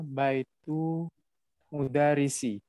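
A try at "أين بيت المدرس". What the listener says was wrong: Masya Allah. Mumtaz.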